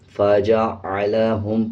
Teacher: عین کی آواز کو واضح پڑھنا ہے، اس میں حمزہ نہ پڑھیں